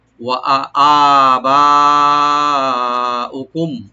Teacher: মিম সাকিন এখানে জাহার করবো আমরা। ওয়া আবানা উকুম, ওয়া ওপেন থাকবে আর হামজা ওপেন করে বাতে একটু কলকলা করবো আমরা ছোট করে।